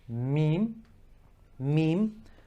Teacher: Meem, meem, from the inner part of the lips. Meem, without any force, and they're just touching together and creating the M sound.